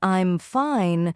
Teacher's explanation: But when saying something like, "I'm fine," your voice goes down at the end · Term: intonation